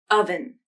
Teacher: at the beginning of the vowel, your vocal cords were probably closed. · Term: glottal stop